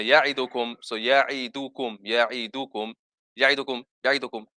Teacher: you're rushing the dal and not giving it the same length as the other letters.